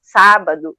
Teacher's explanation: Por exemplo, sábado, tu já saberia, porque a gente fala o primeiro A, a gente fala um pouco mais alto, isso, é sílaba tônica, isso que a gente chama.